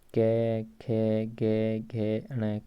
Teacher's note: यह माना जाता है कि इन व्यंजनों का उच्चारण स्थान कोमल तालु, कंठ से ऊपर का स्थान है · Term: कोमल तालव्य